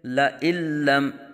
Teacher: کلا لئن لم، یہاں نون ساکن کے بعد حروف یرملون میں سے لام آنے کی وجہ سے نون ساکن میں ادغام بلا غنہ یعنی بغیر غنہ کی ادغام ہوگا